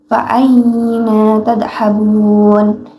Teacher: Terdapat hukum bacaan mad lim karena terdapat ya mati dan bertemu hamzah, bacanya diayunkan.